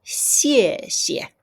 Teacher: The second xie has no tone, which means I need to say it lightly.